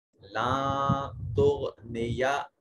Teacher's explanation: نون ساکن کے بعد تا حرف اخفا ہے، نون کو اپنے مخرج میں چھپائیں گے